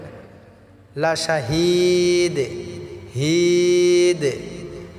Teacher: লা শাহিদ হিদ আমরা এটা তিন আলিফ টা পড়বো এবং এখানে কলকলা করে উচ্চারণ করতে হবে দাল সাকিন হয়েছে